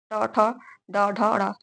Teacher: ट वर्ग ट ठ ड ढ र इसको मूर्धा या मूर्धन्य कहते हैं